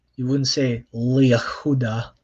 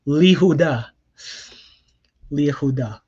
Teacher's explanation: whatever vowel is attached to the yod, usually a shva, drops off. Actually, no, it only happens when it's a shva.